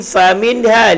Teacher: Bibir. Fa huruf yang berangin, fa bibir dan berangin.